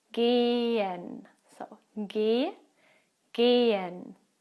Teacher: When you have an H after a vowel, as here in gehen, the H itself is not pronounced. It just makes the vowel sound a bit longer.